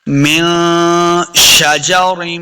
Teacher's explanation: نون ساکن کے بعد جو آگے شین ہے یہ حروف اخفا سے ہے، تو اخفا کا قاعدہ ہے یعنی غنہ کرنا ہے